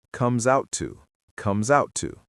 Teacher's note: The S on comes links to the O on out. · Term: linking